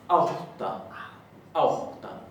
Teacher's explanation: La A con tilde se va a pronunciar au, porque es un diptongo. Y la doble T siempre se pronuncia como HT, es decir, se aspira.